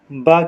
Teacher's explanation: लेकिन बा महाप्राण नहीं है ब क्या होता है अल्प प्राण होता है देखिए तीसरा अक्षर पहला तीसरा और पांचवा अक्षर पहला तीसरा पांचवा